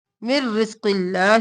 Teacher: میم کو رو میں مدغم کیا نون کو چھوڑ کر ہم نے میم کو رو کے ساتھ ملایا بغیر غنہ کے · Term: ادغام بلا غنہ